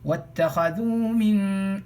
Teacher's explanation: We will read it. We won't make the sound of the alif. All right, that's called wasl. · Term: hamzatul wasl